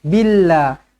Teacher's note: Okey, perkataan Allah kita baca dia nipis. Billah. Apabila huruf sebelumnya berbaris bawah, ba di bawah bi, billah.